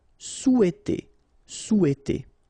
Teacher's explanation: in French we don't pronounce this H, okay? It doesn't phonetically exist here, so you've got sou, after that you've got e, and then t.